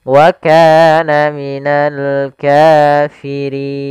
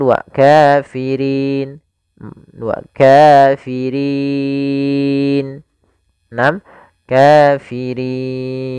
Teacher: Panjang untuk mad arid sendiri boleh 2 harokat, boleh 4 harokat, dan boleh pula 6 harokat. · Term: mad arid disukun